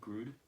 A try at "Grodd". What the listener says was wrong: Grodd. There's only one O. Grodd. It's not Groot. I am Groot.